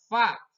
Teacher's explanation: gigi taring yang atas mengenai bibir yang bawah, atas bibir yang bawah fa.